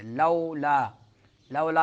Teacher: لولا میں واو ساکن، اس سے ماقبل فتح ہے، زبر ہے، تو واو لین ہوگا